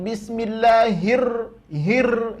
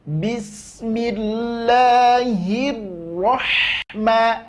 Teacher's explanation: berikan sifat inhirak dari ro maka dia tak akan bergetar